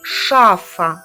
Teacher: перший звук ш твердий приголосний другий звук ша-а голосний третій звук шаф-ф твердий приголосний і останній